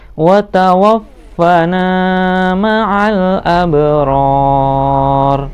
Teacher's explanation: rornya dibaca panjang dan huruf ro belakang disukunkan, mat arid li sukun.